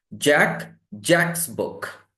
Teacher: Jack ends with the sound k. K. Sound is voiceless. So when you add apostrophe s, that becomes only s.